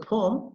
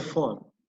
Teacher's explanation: Instead of pa, they will pronounce it like fa.